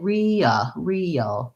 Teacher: In the word real, I have to glide into a dark L.